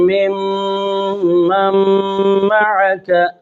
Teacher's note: اور جس میم پر تشدید ہے وہاں ایک الف غنہ کرنا ہے، اور یہاں نون تنوین کے بعد میم ہے تو نون تنوین میم میں داخل ہو گئی، لہذا ادغام ہوا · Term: ادغام صغیر متقاربین